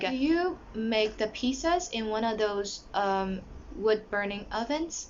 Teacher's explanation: because it is a question a yes or no question so it has rising intonation at the end